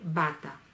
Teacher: refiriéndome al fonema B es bilabial oclusiva